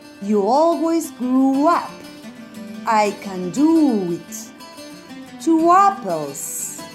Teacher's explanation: if one word finishes with an u sound like grow and you and the next word begins with the vowel then we put a w sound between these two words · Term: linking w, linking W